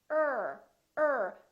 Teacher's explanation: the tongue curls and we pull it back er er so the tip of the tongue is not touching it's just pulled back curled up a little bit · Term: the american r